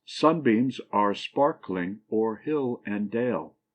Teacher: a foot that has the first syllable accent and the last two unaccented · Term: Dactyl